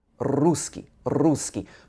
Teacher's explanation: And I know that in Russian you have rolled R's, so you would roll the R in this position, just on the top of your mouth in the alveolar ridge